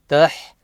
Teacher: Ta joins the Ha with the Fatha, Tah, Yes, Tah. Ha should be read from the middle of the throat, Tah, bit of force.